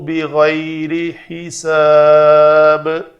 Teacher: یہاں پہ دو زیر والی تنوین ہے تو با کو ساکن کر کے ہم نے با کو قلقلہ بھی کیا۔